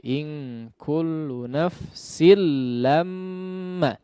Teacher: Yang digunnahkan hanya pada mim yang bertasydid, ya. Huruf lamnya jangan digunnahkan atau dipanjangkan. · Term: idgham bi ghairi gunnah